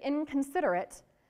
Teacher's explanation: the N there is actually a ng, like the end of the word sing